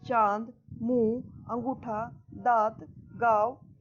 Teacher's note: जिस ध्वनि का उच्चारण करते समय हवा नाक और मुख दोनों से निकलती है उन्हें अनुनासिक कहते हैं।